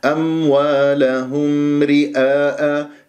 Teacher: الميم تسمعها لازم تجيب المخرجين الشفوي والخيشومي للميم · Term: ميم مظهرة